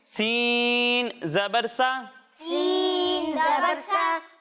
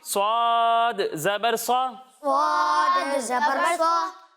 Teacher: جب ہم سین کی اور صاد کی ادائیگی کریں گے تو ان میں سیٹی کی آواز آئے گی، لیکن ان دونوں میں فرق اس طرح ہوگا کہ سین کی ادائیگی کرتے وقت اسے ہم باریک پڑھیں گے، اور جب ہم صاد کو پڑھیں گے تو اسے موٹا کریں گے، کیونکہ صاد حروف مستعلیہ میں سے ہے۔